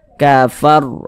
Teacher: maka huruf ro-nya pun dibaca tabkhim, dibaca tebal seperti itu. Sehingga kita tebalkan kafar, begitu.